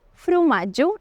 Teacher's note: un altre tret fonètic de l'alguerès és que la O àtona es pronuncia com una U, per això fa un moment t'he dit frumatge i no fromatge.